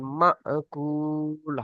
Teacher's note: হ্যাঁ ঝটকা দিয়ে পড়তে হয় হামজা সাকিন